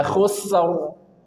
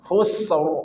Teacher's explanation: Jadi lepaskan dulu sinnya khusr. Jadi karena sin punya sifat rokhawah, maka alirkan suara.